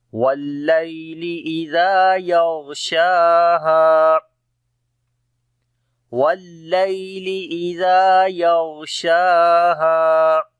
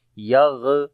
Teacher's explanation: غین کو موٹا پڑھیں گے، حروف استعلاء میں سے ہے اور صفت رخاوت بھی ہوگی یہاں پر، یعنی کہ آواز جاری ہوگی اور نرمی آئے گی۔ شین کو بھی لمبا کریں گے، کھڑی زبر ہے اس کے اوپر، ہا کو پھر لمبا کریں گے، الف مدہ ہے۔